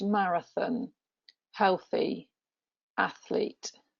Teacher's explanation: the voiceless th in the middle of words examples would include marathon healthy athlete